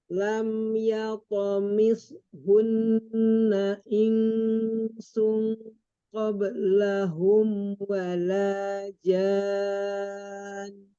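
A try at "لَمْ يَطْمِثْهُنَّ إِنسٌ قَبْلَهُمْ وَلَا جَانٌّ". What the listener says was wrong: Coba kita tadi udah belajar lam, jangan wala, tipiskan lagi lam. Wala, wala, jangan terangkat pangkal lidahnya. Wala, wala jan.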